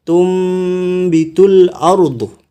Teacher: Terdapat nun di atasnya ada mim kecil. Ini menandakan bahwasanya nunnya dibaca mim. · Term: iqlab